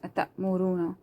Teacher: أتأمرون الناس, because this is waw madda. Waw is silent, before that there is madda, so you have to stretch it.